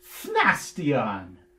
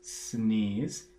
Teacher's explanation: F and S are both fricatives, and they're both in the front of the mouth